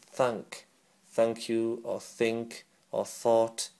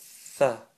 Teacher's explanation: so your tongues are going to come up and touch the bottom edge of the central upper two teeth okay you don't need to stick your tongue out too much